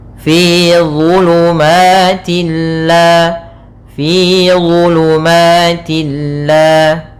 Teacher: dha makhrajnya sama seperti huruf dzal dan tha, tapi pangkal lidahnya dia terangkat